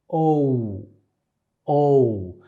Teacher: you have the O plus the U sound, and you start O, O, but it all happens in the back. So you start in this box and you actually finish in this box. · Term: off glides